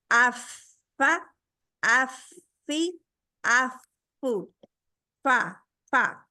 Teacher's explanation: और हमारा फा के लिए सिर्फ हमारे नीचे वाला होंठ इस्तेमाल होता है। ऊपर वाले दो दांत जो स्नाया ओलिया है उनका सिरा, जब नीचे वाले स्नाया सुफला जो है, नीचे वाले दो दांत को अरबी में स्नाया सुफला कहते हैं।